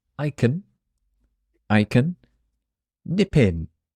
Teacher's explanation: the P joins the next word pin pin I can nipin that means I can visit quickly